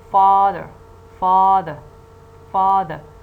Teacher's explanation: you see that the first syllable is the strong syllable the first syllable is this stressed syllable because it contains a strong vowel